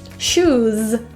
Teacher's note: That final S is also a Z.